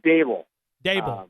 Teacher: Daboll. Emphasis on the first syllable, and it's like D-A-Y, Daboll.